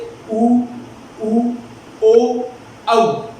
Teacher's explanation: वृत्ताकार में यानी गोल हो जाएंगे, गोल की आकृति में हमारे होठ हो जाएंगे